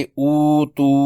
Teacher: تا کی پیش اور واو ساکن سے مد اصلی ہوگی، اس کی مقدار بھی 2 حرکات ہے، اسے پڑھیں گے او تو، دونوں کو 2 حرکات لمبا کیا۔